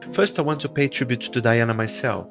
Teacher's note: ela dá ênfase à palavra tribute e à palavra Diana